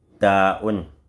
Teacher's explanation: Quand tu dis taoun, c'est l'extrémité de la langue, ou bien le bout de la langue, en prenant l'appui sur la racine des incisives qui est en haut, bien proche du palais.